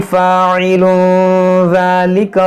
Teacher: तनवीन के बाद ज़ार, यहाँ पर इख्फा करेंगे, यहाँ पर वक्फ करेंगे।